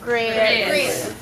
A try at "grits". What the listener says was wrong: Most of you didn't quite get it because the proper Southern pronunciation of the word grits involves what? It's 2 syllables. Grits. Grits.